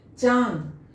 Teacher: अब चांद में उच्चारण कर कर हम देख रहे हैं कि मुंह के साथ साथ नाक से भी ध्वनि निकल रहा है, दोनों से ध्वनि आ रहा है